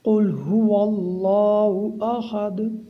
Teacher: دال کو جب ہم آخر میں ساکن کریں گے تو قلقلہ ہوگا۔ · اللہ تعالیٰ کے نام کو موٹا پڑھیں گے کیونکہ اللہ تعالیٰ کے نام سے پہلے واو کے اوپر فتح ہے۔